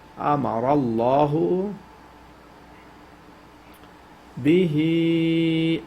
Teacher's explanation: Ra should be pronounced with tafkhim, and also lam should be pronounced with taghlid